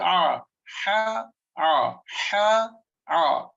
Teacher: they both comes from the same place, which is the Wastul Halq, that is middle throat